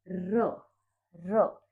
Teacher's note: र एक वाइब्रेशन से हो रही है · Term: प्रकंपित ध्वनि